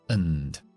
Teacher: Por lo tanto, tiene una forma débil de pronunciarse. Cambiamos la A por la schwa, el sonido más común que hay en la lengua inglesa. Relajamos todo y a.